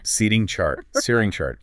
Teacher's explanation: Instead of a full stop, the tongue just does a very quick tap or flap against the roof of the mouth. And that quick tap motion physically, it's almost identical to how you make a soft D sound. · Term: flap T